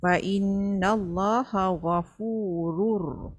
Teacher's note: Masukkan sahaja tanwin bunyi nun tu ke dalam ra tetapi tidak berdengung. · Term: idgham bila gunnah